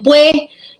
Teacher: Otra forma que evidencia, ¿no?, esa elisión de consonante final es cuando decimos pues. En el habla rápida, ese pues se convierte en pue.